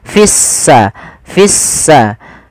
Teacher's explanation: lamnya dianggap tidak ada sehingga langsung diidgamkan ke huruf Sin sehingga sinnya berharakat tasdid seakan-akan s-nya dua · Kita namakan di sini, kami lupa nulis, alif lam syamsiyah, yaitu alif lam yang kita tulis tapi tidak kita baca, sehingga di sini lamnya ditandai dengan warna abu-abu. Artinya lamnya dianggap tidak ada, sehingga langsung diidghamkan ke huruf sin, sehingga sinnya berharakat tasdid, seakan-akan s-nya dua. Fissa, fissa.